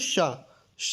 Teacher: ये शा का जो उच्चारण स्थान होता है वो तालु होता है, ठीक, तालु या तालव्य कहते हैं।